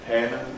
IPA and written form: pæn (pan)